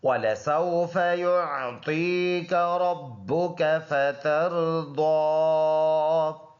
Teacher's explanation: با دونوں ہونٹوں کے خشک والے حصے کے ملنے سے ادا ہوگا سختی کے ساتھ